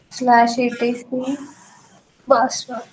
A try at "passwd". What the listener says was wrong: Yes, slash etc passwd, not password, passwd.